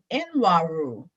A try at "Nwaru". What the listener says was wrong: It's pronounced Waru. It's pronounced Waru. Just pretend that the N is silent.